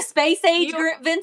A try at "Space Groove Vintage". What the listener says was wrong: You want to say Space Age. It's Space Groove, but I get why you're saying Space Age.